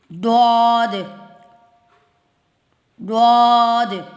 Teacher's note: تو یہ اکثر لوگ زواد پڑھتے ہیں، لیکن اس کو صحیح جو ہے نا وہ ڈواد ہی ہے،